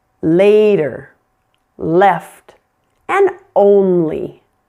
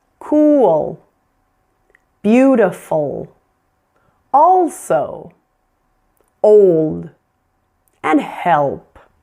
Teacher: Now, the dark L is an L that we use after vowel sounds. And you'll see that I have the notation V L.